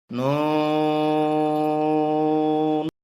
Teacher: চার আলিফ টানতে হবে, জিহ্বার আগা তালুতে লাগবে।